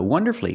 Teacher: don't pronounce that U shorten the word and make it three syllables